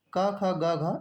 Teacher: क ख ग घ ये कंठ से बोले जाते हैं